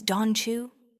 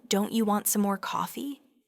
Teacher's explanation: The T sound from don't often merges with the Y sound from you to produce a ch sound